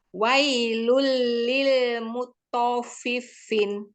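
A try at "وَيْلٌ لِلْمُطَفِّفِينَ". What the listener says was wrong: Oke, tapi fa itu harus terdengar rohwah namanya. Jadi mutaffifin.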